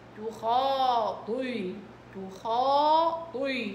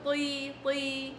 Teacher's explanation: الطا هنا كسرة مرتبة دنيا، ولكن لأنه فيها إطباق بتطلع مفخمة قوي.